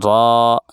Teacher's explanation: रा जुबान का किनारा और ऊपर के सामने के चारों दांतों के मसूड़े से अदा होता है। र थोड़ा सा पुर होगा याद रखिएगा।